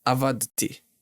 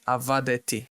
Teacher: The D and the T sound are a little bit difficult and straining a little bit our tongue. So we'll add a buffer vowel e. So it will be avadeti.